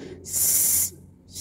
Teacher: আর যখন সিন বলব তখন কিন্তু সিন এরকম উচ্চারণ হতে হবে সাপের শীষের মত একটি শীষ হবে